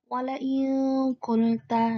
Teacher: contoh nun sukun bertemu dengan qaf. Maka membacanya samar. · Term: ikhfa